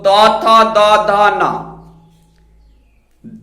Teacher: दंत से उच्चारण होने के कारण दंत वर्ण है